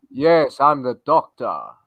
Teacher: It's like you've got to throw your voice back in. It's like you're also speaking through your nose as well.